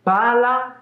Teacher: Se ascolti bene, nella parola con la doppia consonante faccio una piccola pausina, come se fosse un lieve abbassamento della voce. Invece, quando dico pala, la mia voce rimane sempre la stessa. Non c'è nessuna piccola pausa, neanche un accenno.